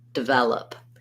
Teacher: So this would sound like velop, develop. You hear how really light and short I was on that duh syllable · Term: unstressed first syllable